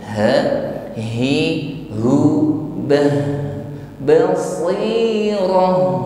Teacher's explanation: Si si, tapi untuk shad, angkat dulu, bas, ya tebal, bas selanjutnya, diakhiri dengan huruf ta marbutah jadi ta marbutah di sini dibaca sebagai waqf, menjadi huruf ha, ha, ha, biasa, basi, jadi kita menambahkan kualitas huruf ha, yaitu rakhawah. Biarkan bunyi huruf itu mengalir.